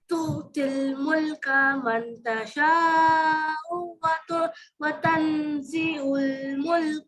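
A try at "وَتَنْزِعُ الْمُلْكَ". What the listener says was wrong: کا نہیں. دیکھیے دونوں جگہ آپ نے کا کو لمبا کیا ہے، ملک کا زبر ہے، وتنزع الملک.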